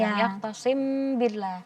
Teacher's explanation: Ya, jadi kadar dengungnya itu 2 harokat. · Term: ikhfa syafawi